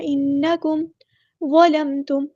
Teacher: میم ساکن پہ اظہار شفوی ہو رہا ہے، ہم نے یہاں پہ ٹائم نہیں دینا